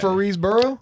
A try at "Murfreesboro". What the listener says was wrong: It almost sounds like you're putting another syllable in the middle.